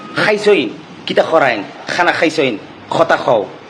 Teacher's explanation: ওদের গলাটা থেকে খ খ আওয়াজ বের হয়